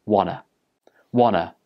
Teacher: the ta sound at the end of want gets dropped, and it becomes wanna.